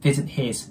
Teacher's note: 最後の▁T▁はね、発音しなくても▁OK▁です。